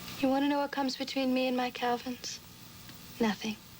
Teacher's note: very creepy babyish vocal fry meant to sound simultaneously sexual and vulnerable